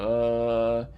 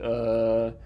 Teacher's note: that's schwa so that's mid and that's central it's not rounded you're not really doing anything to produce it you just uh